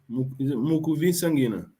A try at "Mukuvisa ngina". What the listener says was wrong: Yes, well done.